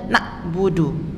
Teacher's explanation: kalau dibaca nabudu tandanya kita secara tidak sadar mengganti huruf Ain dengan huruf hamzah